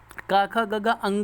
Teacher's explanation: का वर्ग के सभी व्यंजन कंठ से बोले जाते हैं